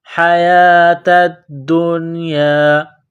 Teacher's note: نشتروا، واو کو لام کے ساتھ ملانا ہے، واو لام پیش ول، حیات الدنیا، یا کے اوپر کڑا زبر ہے، 1 الف کے لمٹ میں کھینچنا ہے